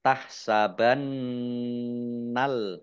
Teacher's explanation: La, lam, fathah, alif, mat tobi'i, panjang dua harokat, tahsabannal, nun tasdid, bacaan di idgham, ya, dibaca mendengung, ditahan dua harokat